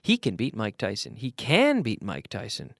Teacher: Here we're emphasizing can because it's a case that most people can't, but he can.